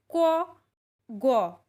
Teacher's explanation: ক গ এগুলি উচ্চারণ করার সময় অল্প শ্বাসের দরকার হয় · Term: অল্পপ্রাণ বর্ণ